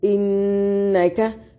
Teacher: नून में शद्दत पे गुन्ना जरूरी है, काफ को बारीक पढ़ेंगे